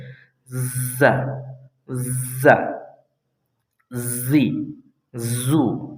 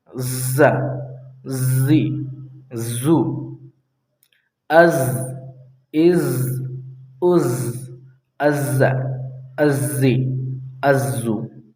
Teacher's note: وہ جو زبان ہے یہ سامنے کے 4 دانتوں کے قریب ہی رہے گی مگر ملے گی نہیں، اور آپ کو اندر سے آواز نکالنا ہے زور سے